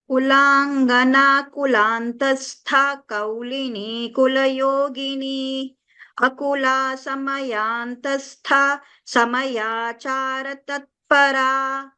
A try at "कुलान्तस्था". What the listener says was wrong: Just in this first part where kulantastha, dirgha can be little more dirgha. Kulangana kulantastha kaulini kulayogini. Similarly, samayantastha. Little more dirgha you can give.